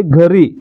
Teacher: घरी म्हणजे इ चा उच्चार होतोय अ चा होत नाही म्हणजे या ठिकाणी अ लोप पावतोय आणि इ आहे असा राहतोय